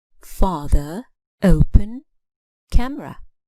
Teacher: you can clearly hear the stress on the first syllable